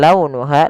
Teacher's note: Lembutkan pelafalannya dalam lau nuha karena ada huruf wau yang sukun didahului dengan fathah.